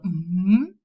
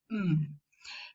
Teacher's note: we can see the lower lip and upper lip pressed together. There is a closure at the lips, the same closure as for p and b. And the soft palate is lowered. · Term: bilabial nasal m